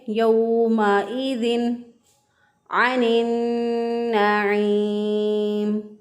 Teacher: अब तनवीन के बाद देखिए नून साकिन या नून तनवीन के बाद जब हरूफ हलक़ी में से कोई हरफ आ जाए तो वहाँ पर इज़हार होता है। नून साकिन और तनवीन की आवाज़ को ज़ाहिर करके, इनके नून को ज़ाहिर करके पढ़ेंगे